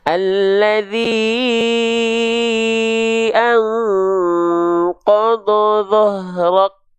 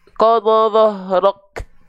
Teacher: Maka yang keluar, yang tertunaikan adalah sifat syiddahnya dulu. Tertahan dulu suara, baru terpercikan nafasnya. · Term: Syiddah dulu baru hams